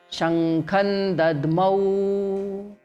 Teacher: But the moment Dadmau, next word has come, so Shankham plus Dadmau becomes Shankhan Dadmau. There is no ma in between now. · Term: Anuswara